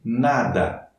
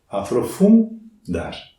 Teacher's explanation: Eu toco com a língua nos dentes superiores para pronunciar o N.